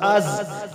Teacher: یہ زا سٹی والا حروف سختی سے بنیں گے